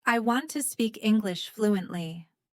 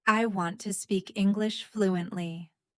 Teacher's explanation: Notice how want, speak, and fluently are stronger.